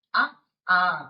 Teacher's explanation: అచ్చులలో అ ఆ అనే రెండు అచ్చులు కూడా కంఠములుగా పరిగణింపబడ్డాయి.